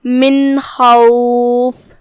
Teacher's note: من خوف، کلمت خوف میں یہاں حرف الخاء ہے، خاء حروف التفخیم میں سے ہے، ہم خاء کو بھاری آواز میں پڑھیں گے، خاء کی ادائیگی حلق کے اوپر والے حصے سے ہے